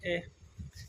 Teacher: तो ए अपने जीभ के मध्य भाग से निकल रहा है